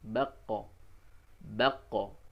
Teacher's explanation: Kalau qaf ketika sukun dipantulkan suaranya